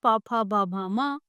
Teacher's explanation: जब उनको हम बोलते हैं तो होठ टच होते हैं। इनके उच्चारण में वायु का अवरोध बहुत कम समय के लिए होता है। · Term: प वर्ग